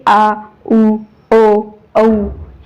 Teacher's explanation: चार वर्ण आहेत हे आ उ ओ औ हे चार वर्ण जेव्हा आपण उच्चार करत असतो तेव्हा जिभेचा मागचा म्हणजेच पश्च भाग हा थोडा वर उठतो आणि वर्णाचा उच्चार होतो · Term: पश्च स्वर